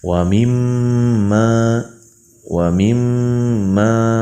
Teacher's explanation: ada mim bertasjid, hukumnya gunnah musyaddadah. Adapun cara membacanya yaitu ditahan selama dua ketukan atau dua harokat.